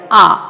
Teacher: The lips are spread but they are not rounded, so A is a back open unrounded vowel